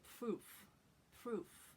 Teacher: This sort of R sound that they make is almost more like a little puff of air. It's like you were going to say a V, like V, V, or F.